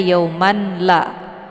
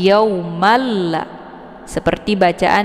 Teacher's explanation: Maka tanwin ini gugur karena sudah kita masukkan ke dalam huruf lam dengan cara ditekan. Jadi bunyi n-nya hilang. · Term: idgham bila ghunah